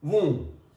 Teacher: B is underlined, it means that we are not here pronouncing B sound.